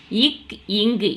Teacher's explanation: இரண்டும் நாவின் முதற்பகுதி அன்னத்தின் அடிப்பகுதியை பொருந்துவதால் பிறக்கின்றன